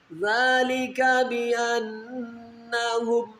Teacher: یہاں پر نون مشدد غنہ ہو رہا ہے